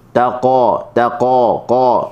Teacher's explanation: huruf qaf kita ke makhraj huruf qaf di pangkal lidah · huruf qaf di pangkal lidah. Okey, bertepatan dengan langit yang lembut.